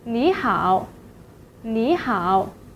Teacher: because of the two-third tone rules, the first syllable is changed to the second tone. So 你 will be pronounced as 你 in this situation.